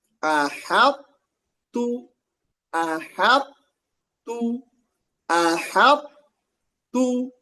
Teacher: Hanya tebal sebentar aja pada thnya aja. Ha-nya tipis thnya tebal t-nya tipis.